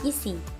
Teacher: vokal I tinggi atas depan tak bundar